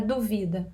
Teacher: Tem um acento tônico no vi